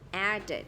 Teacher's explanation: Khi mà âm t và âm d thì mình sẽ phát âm là it